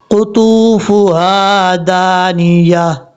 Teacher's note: قطوفها دانیہ، یہاں پر قاف حروف مستعلیٰ میں سے ہے، پر پڑھا جائے گا. طا بھی حروف مستعلیٰ میں سے ہے، اس کو پر پڑھیں گے